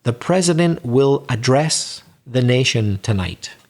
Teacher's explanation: we both agree that the verb has stress on the second part the second syllable